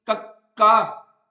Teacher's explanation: ਜੀਭ ਦਾ ਪਿਛਲਾ ਪਾਸਾ ਕੋਮਲ ਤਾਲੂ ਨੂੰ ਸਪਰਸ਼ ਕਰਕੇ ਸਾਹ ਦੀ ਹਵਾ ਨੂੰ ਰੋਗ ਪਾਉਂਦਾ। · ਜੀਭ ਦਾ ਪਿਛਲਾ ਪਾਸਾ ਕੋਮਲ ਤਾਲੂ ਨੂੰ ਸਪਰਸ਼ ਕਰਕੇ ਸਾਹ ਦੀ ਹਵਾ ਨੂੰ ਰੋਕ ਪਾਉਂਦਾ ਹੈ। ਬੇਸਿਕਲੀ ਜਦੋਂ ਇਹ ਧੁਨੀਆਂ ਆਪਾਂ ਬੋਲਦੇ ਹਾਂ, ਆਪਣੀ ਜਿਹੜੀ ਜੀਭ ਹੁੰਦੀ, ਜੀਭ ਦਾ ਪਿਛਲਾ ਪਾਸਾ ਜਿਹੜਾ ਹੁੰਦਾ ਨਾ, ਕੋਮਲ ਤਾਲੂ ਨੂੰ ਸਪਰਸ਼ ਕਰਦਾ ਹੈ। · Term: ਕੰਠੀ ਧੁਨੀਆਂ, ਕੰਠੀ